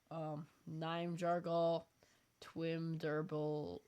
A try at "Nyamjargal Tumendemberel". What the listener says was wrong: You did pretty good on the first name, but you said Twim. Where's the W in his last name?